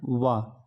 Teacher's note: व का उच्चारण दंत और ओष्ठ से दोनों से होता है